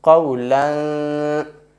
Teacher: our tongue will not connect to the teeth, it will remain still, or you can say suspended between the teeth, and some of the voice goes to our nose and some will come out through our mouth. Bal qawlan thaqilan. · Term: ikhfa sound